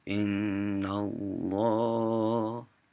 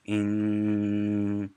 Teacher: Okay, so that N, when it's double and it's green, you push it out, you make it heavy. It's all coming out of your nose. So if you do this, you say in, and you just kind of let it hum and go for as long as you can. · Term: Double N